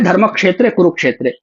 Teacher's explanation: पांचवा अक्षर कु और छठा अक्षर रू, ये दीर्घ है ना। रू स्वयं में ह्रस्व है, लेकिन आगे क्ष है, संयुक्त वर्ण है, इसलिए ये दीर्घ हो जाएगा, इसका उच्चारण दीर्घ हो जाएगा। आगे यदि संयुक्त वर्ण होता है तो पिछला वर्ण गुरु हो जाता है।